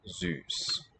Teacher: Standard German has a long front rounded vowel Ü